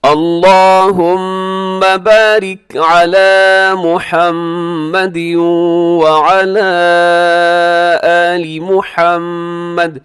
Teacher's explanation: اب اس میں بھی دیکھیے گا اللہم، اس کو اپنے موٹا بھی پڑھنا ہے لام کو اور لمبا بھی کرنا ہے. بارک میں را باریک ہوگا اور علی لام کے اوپر کھڑا زبر سے لمبا کیجیے گا